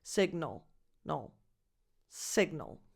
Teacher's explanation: And the last vowel before the L is a schwa.